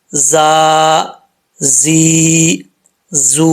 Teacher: یہ زا جو ہے سیٹی کے ساتھ پڑھا جائے گا کیونکہ حروف صفیریہ میں سے ہے